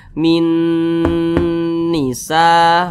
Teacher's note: huruf yang di sini ya Min Nisa begitu kemudian didengungkan jadi suaranya itu kita tahan ya kita panjangkan sejenak panjangnya dengungan atau panjangnya ghunah itu adalah dua harakat